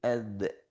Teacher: Tapi huruf dal itu agak ke depan lisannya